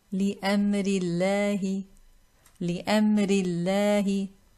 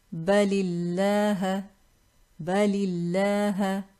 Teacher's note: this Laam in lafzul jalala is pronounced with tarqeeq, pronounced light, with a flat tongue and empty space in the mouth. Preceding letter carries a kasra.